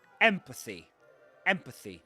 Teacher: And the stress goes on the first syllable.